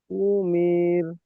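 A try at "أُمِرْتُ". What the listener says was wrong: টান হবে না, উমির।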